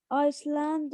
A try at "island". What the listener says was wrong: Island, guys. A silent S. How many times I have to say that? Silent S. Island.